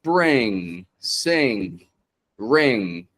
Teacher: What's going on here is when you've got words ending in ng, bring, sing, ring. I'm not bringing my tongue up like brin, sin, but I'm pulling it back. The sound fades off. It gets redirected through my nose